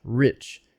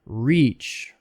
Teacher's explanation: Relax your tongue muscle, make it short. E has to be longer.